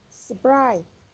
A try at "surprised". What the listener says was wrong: Surprised. Surprised. There's a zd ending sound.